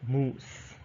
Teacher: so it's a long high back vowel · high so your mouth is a bit close so oh and it's a back vowel because your tongue is at the back